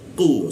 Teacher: tidak ada hembusan udara ketika membaca awalnya qu · ku di siku tenggorokan, lidahnya dinaikkan sehingga rongga udara terkunci ya. Ku seperti itu, tidak ada hembusan udara ketika membaca awalnya.